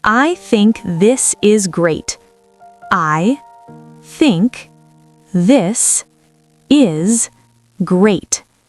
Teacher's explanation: Two th sounds. One unvoiced, one voiced.